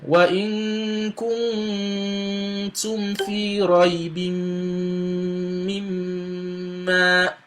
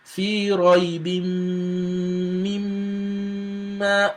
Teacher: So you can never get it Shaddah of the Meem and the Nun pronounced without having Ghunna. You can never get them pronounced without having Ghunna. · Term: Meem with Shaddah